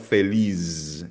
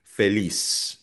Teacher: Ang letter Z sa Spanish ay binibigkas na parang S.